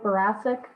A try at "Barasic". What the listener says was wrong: It's a Barachik, as if it were a CH almost.